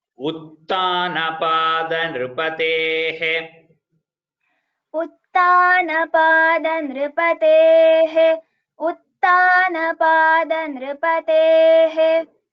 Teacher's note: So whatever the alpa prana is correct, it is not utthana, it is uttana.